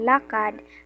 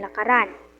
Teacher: ang d ay nagiging R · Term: pagpapalit ng ponema